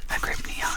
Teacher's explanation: with a stress on the second syllable